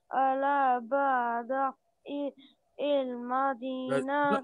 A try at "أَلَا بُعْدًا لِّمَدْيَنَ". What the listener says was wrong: There is no E. ألا بعدا لمدينة. There is no E. ألا بعدا لمدينة.